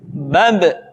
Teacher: Ketika mati, maka terdengar suara pantulan.